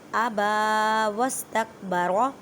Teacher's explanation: را کو موٹا پڑھیں کیونکہ را کے پر زبر ہے